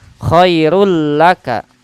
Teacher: Awas, di tanwin khairul laka, tanwin bertemu lam, idgham bila gunah